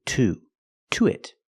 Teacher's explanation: we pronounce it to with a long ooh